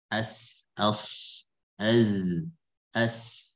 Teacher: Sad, zai, sin dari ujung lidah. Min fawqi sanaya sufla. Bertemu dengan gigi seri bawah.